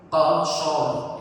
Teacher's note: Jadi rohnya ikut tebal ya, karena son ya, sebelumnya huruf son, jadi apa mudah apa tebal semua, kof tebal, shot tebal, ro tebal ya